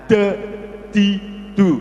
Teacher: Jangan sampai kebanyakan nafas yang keluar, jangan de, tapi de agak ditahan. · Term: dal